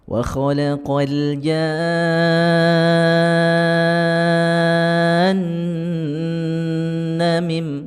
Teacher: nunnya harus dengungkan terlebih dahulu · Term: mad lazim